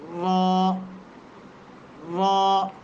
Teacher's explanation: ثنایا اور رباعی کے مسوڑوں سے جا کر کے لگے نا جب زبان کا کنارہ، تو اس وقت لفظ را ادا ہوتا ہے